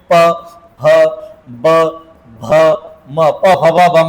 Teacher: ज्यांचा उच्चार करताना ओठांची हालचाल होते म्हणजे ओठ एकमेकाला लागतात त्याला म्हणतात ओष्ठे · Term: ओष्ठ्य